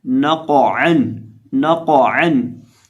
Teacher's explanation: आइन को हम हल्क के दरमियान से इसकी आवाज़ अदा करेंगे · अब इस लफ्ज़ के अंदर भी हमारे पास कुल 3 हरूफ हैं, नून, कौफ और आइन। जो कौफ है इसको हमने मोटा भी पढ़ना है और इसको हमने हिलाना भी है क्योंकि ये हरूफे कलकला में से है।